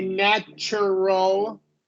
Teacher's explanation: when TU is in the middle of a word, the T becomes a ch sound,